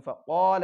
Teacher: मद ज़्यादा करना नहीं, बस क़ाफ़ के साथ उसकी जो मिक़दार एक अलिफ की है हुरूफ़ मद्द असली की, बस उतनी ही मिक़दार में उसको खींचेंगे